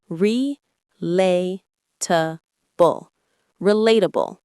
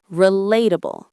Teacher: The stress is on the second syllable, lay.